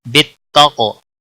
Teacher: قاف پر قلقلہ ہوگا، قاف کو موٹا بھی پڑھیں گے